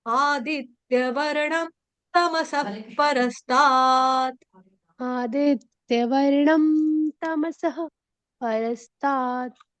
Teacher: यहाँ पे विसर्ग का उच्चारण आधे फ से करेंगे, हलंत फ से, क्योंकि आगे प फ प आ रहा ना, इसलिए।